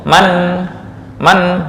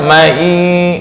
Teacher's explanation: ini posisi nun sebelum bertemu ya itu masih normal, nggak ada dengung. Man bukan mai, nggak.